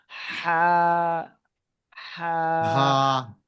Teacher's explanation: জিম, জি, মাশাআল্লাহ। হা, এটা খ, গলার কণ্ঠনালীর মাঝখান দিয়ে হবে